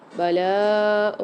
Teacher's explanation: لام کے ساتھ الف مد آ رہی ہے اور مد بھی آ رہی ہے، اس کو 3 سے 4 الف مدار کھینچ کے پڑھیں گے